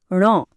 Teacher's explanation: हे ध्वनी काढण्यासाठी हवा नाकातून बाहेर पडणं गरजेचं आहे. म्हणूनच तर यांना नासिक्य ध्वनी किंवा अनुनासिकं म्हणतात.